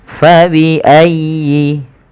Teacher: Fa, nafarnya alif mengalirkan nafas. Fabi ayyi, tekan ya-nya tapi dengan lembut karena ya termasuk huruf lin.